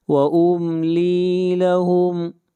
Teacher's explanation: میم کو ظاہر کر کے پڑھیں گے، میم ساکن کے بعد نہ میم ہے اور نہ با ہے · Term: اظہار